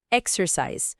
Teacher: O ear é aquele R americano bem enrolado, característico